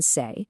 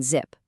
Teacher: Compare the quiet hiss of S in say with the loud hum of Z in zip. That vibration, that little buzz is literally everything.